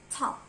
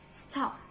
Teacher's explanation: But when you see the word T, in the word stop. It's not aspirated. It's not giving a puff in the air.